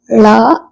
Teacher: நாவின் நுனி மேல்நோக்கி வளைந்து வருடுவதால் லகரம் தோன்றும் லா தமிழுக்கு உரித்தான சிறப்பு சிறப்பு ஒளி எனவே இதனை சிறப்பு லகரம் என அழைக்கிறோம்.